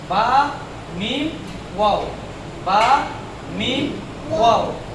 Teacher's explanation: বা মিম ওয়াও, এই ঠোঁট থেকেই 3টা হরফ উচ্চারিত হয়